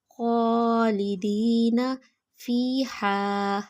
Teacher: ہا کی آواز حلق سے نکالیں گے